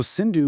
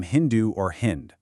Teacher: in ancient Persian, the S sound naturally shifted to an H sound. So, Sindhu became Hindu or Hind.